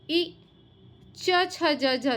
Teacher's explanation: इ च छ ज झ च के पूरे वर्ग य और शकार तालव्य श इनका उच्चारण स्थान तालु कहलाता है।